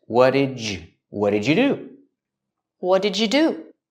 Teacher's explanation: for the D linking to the Y and U, you can make a J sound like in juice and jump.